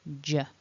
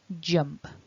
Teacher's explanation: end the short vowel e and then the j j now to make that j your tongue goes to the top of your mouth and this vibration in the throat